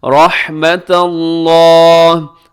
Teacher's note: لفظ اللہ جو ہے اسے موٹا پڑھیں گے کیونکہ اس سے پہلے تا کے اوپر زبر ہے